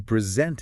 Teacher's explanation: Right, but if you're formally giving something or showing something, you present it with the emphasis on the second syllable